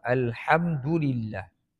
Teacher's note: Alhamdulillah, mim mati bertemu dengan dal, itu izhar syafawi. Kita baca dengan jelas dan nyata.